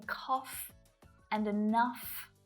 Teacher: sometimes it's not silent at all, like in cough and enough, where that GH is pronounced as a f.